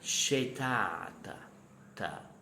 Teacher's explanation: You never let hear the final vowel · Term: ghost vowel